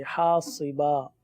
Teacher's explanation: با کو ایک الف تک کھینچ کے پڑھیں گے